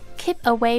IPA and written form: kiːp əˈweɪ (keep away)